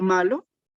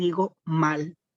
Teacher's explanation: En este caso, hemos perdido solo la vocal de la última sílaba. Tengo la palabra, por ejemplo, malo y pierdo, en este caso, la vocal y digo mal. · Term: apócope